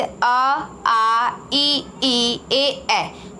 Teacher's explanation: अवृत्ताकार, अवृत्ताकार जैसे कि इसके नाम से स्पष्ट है कि जब हम लोग उच्चारण करते हैं तो हमारा होठ गोल नहीं होता है